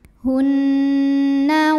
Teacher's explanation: ada hukum ghunah musyaddadah karena Nun bertasdid cara bacanya dengung